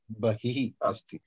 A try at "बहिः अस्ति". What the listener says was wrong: विसर्ग अस्ति तत्र विसर्गमपि वदनीयम् यू हैव टू से द विसर्ग अस्तु एनी क्वेश्चंस अबाउट अंतः एंड बहिः